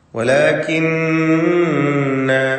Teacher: വലാകിന്ന, നൂൻ മുശദ്ദദയെ മണിക്കണം.